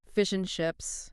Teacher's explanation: the D is just completely gone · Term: elision